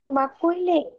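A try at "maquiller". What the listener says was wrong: না, মাকুই না, I didn't say মাকুই। মাকি, ময়াকার কয়রসি, হ্যাঁ, মাকি, মাকি অন্ত্যেষ্টয়কারী, হ্যাঁ, মাকিয়ে, মাকিয়ে, হ্যাঁ। মাকিয়ে,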